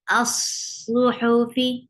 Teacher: یہ صاد کے اوپر آپ اپنا توجہ مرکوز رکھیں کیسے صاد اطباق لے رہا ہے